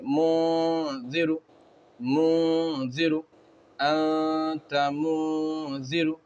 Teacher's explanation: تو یہاں پر اخفا قاعدہ ہوگا، نون کی آواز کو ناک میں چھپا کر پڑھیں گے